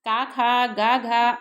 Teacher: सबका एक वर्ग बनाया गया जिसका नाम रखा गया का वर्ग कंठ से उच्चरित होने के कारण यह कंठ वर्ग भी कहते हैं